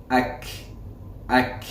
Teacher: You'll notice some airflow after the kaf with the sukoon.